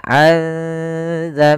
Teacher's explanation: Iqlab secara bahasa berasal dari kata aqlaba yuqlibu, membalikkan. Apa yang dibalikkan di sini yaitu suara nunnya kita ganti dan dibalikkan menjadi suara mim. Awalnya zanbihi menjadi zambihi karena di sini ditandai dengan mim warna kecil berwarna hijau.